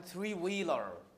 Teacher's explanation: the primary stress is on the first syllable which is the number